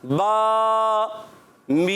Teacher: बा को खींचना है एक अलिफ और मीम को खींचना है 3 अलिफ